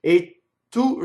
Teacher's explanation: E tu, the word a is and remember that causes a phrasal doubling. So the word tu, the T doubles.